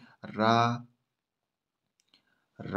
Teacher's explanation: वर्त है, लुंठित है, सघोष है, अल्पप्राण व्यंजन है